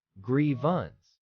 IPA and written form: ˈɡriːvəns (grievance)